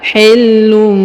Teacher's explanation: Perhatikan huruf tanwin un, ya, pada huruf lun bertemu dengan mim atau bertemu dengan ba, tanwin bertemu ba, maka dia didengungkan dan disamarkan. Huruf tanwin unnya berubah menjadi mim sukun, ya, atau menjadi mim. Contohnya hillum, ya, berubah menjadi mim, kemudian kita dengungkan dan kita tahan 2 harokat.